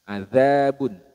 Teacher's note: Huruf zal ini makhrajnya pada bertemunya ujung lidah dengan gigi seri bagian atas.